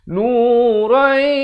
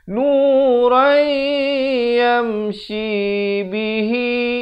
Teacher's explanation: Nurai, idgham bi gunnah. Asalnya nuran, tapi bila datang ya masuk beserta dengung dua harakat. Nurai yamshi bihi, shi dua harakat, hi dua harakat.